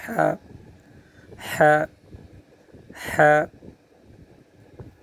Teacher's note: حلق جو ہے، اس کے درمیان سے یہ ہا کا جو حرف ہے وہ ادا ہوتا ہے، اس کا مخرج یہی ہے۔